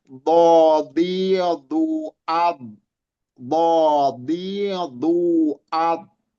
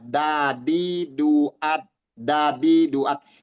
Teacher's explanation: Tapi kalau dod itu kalau kita nggak pas itu seperti terdengarnya seperti huruf dal nanti. Bodidu, karena yang main di sisi lidah pinggir ya, sisi lidah kiri kanan lidah, bukan di ujung.